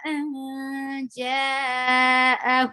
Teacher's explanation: Jim is harf ikhfa, so you will hide the sound of noon, and you will go to you will keep this noon in your nose, and you will go towards the makhraj of Jim.